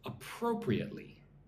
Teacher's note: 5 syllables. Put the emphasis on the second syllable.